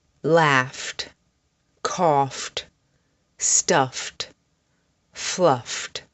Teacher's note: The sound at the end of these words is ft, ft.